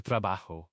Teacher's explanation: The J always has that strong guttural H sound, no matter what vowel follows it. · No J sound like in juice. It's always a breathy H.